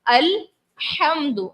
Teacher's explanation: सबसे पहली गलती जो हम यहाँ पर करते हैं, पढ़ते हैं अल्हम्दुलिल्लाहि रब्बिल आलमीन। लफ्ज है अल्हम्दु, हा से, हा हलक के दरमियान वाले से सदा करना होता है